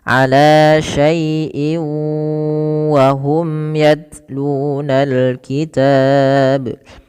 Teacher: Cara membacanya memasukkan tanwin yang ada pada lafal in kepada huruf wau dan ditahan dua harakat. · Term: idgham bighunah